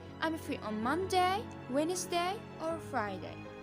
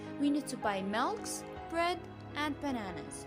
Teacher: the voice rises at the end of each item but falls with a final item